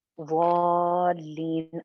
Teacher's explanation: शद की वजह से आने वाली मद को तीन अलिफ लंबा करके पढ़ेंगे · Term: शद वाली